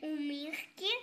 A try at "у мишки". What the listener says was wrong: Неправильно. Нет, ше не слышу.